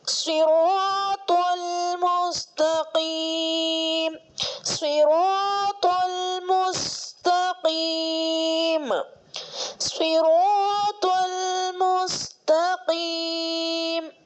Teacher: اب یہ تا جو ہے باریک آواز سے پڑھنا ہے کیونکہ حروف مستفیلہ میں سے آتا ہے، باریک حرف میں سے آتا ہے. اور توا کو پر آواز سے پڑھنا ہے کیونکہ یہ حروف مستعلیہ میں سے آتا ہے